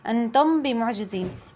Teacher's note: إخفاء شفوي، أخفينا الميم الساكنة عند الباء